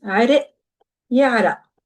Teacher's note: the qaf is typically pronounced as a glottal stop in Lebanese.